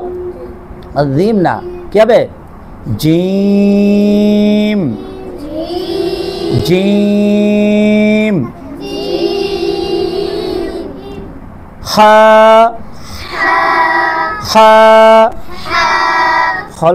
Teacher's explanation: জিহবার যে মধ্যখানটা কোথায় লাগবে তালুর সঙ্গে লাগবে উপরের তালুর সঙ্গে লাগবে